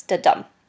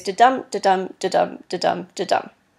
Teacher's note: an iambic rhythm is one where we have two syllables. The first is unstressed and the second is stressed.